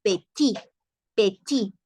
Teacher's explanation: Porque la E no va tildada. La T no se pronuncia. Entonces es como que si nunca le agregamos la E ahí y seguimos diciendo petit, petit.